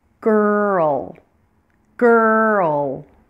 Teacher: I'm also going to hold that L longer when it's at the end of a word